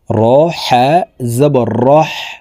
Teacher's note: হলকের মধ্যখান থেকে উচ্চারণ করতে হবে, কারণ হার মখরাজ হলকের মধ্যখান থেকে হবে।